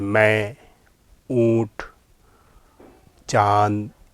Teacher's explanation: नून गुन्ना होता यह है कि नून की ही शक्ल होती है, लेकिन उसमें पूरा नून नहीं बोला जाता, उसको नाक में बोला जाता है। नाक में से उसकी आवाज़ आती है नून की, जैसे मैं, ऊँट, चाँद, इस तरह के।